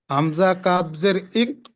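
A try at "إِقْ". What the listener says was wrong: কাফ নয়, কফ। কাফ নয় ভাই, কফ।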